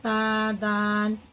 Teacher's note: जुबान की नोक और आगे के ऊपर के दांतों की जड़ से मिलाना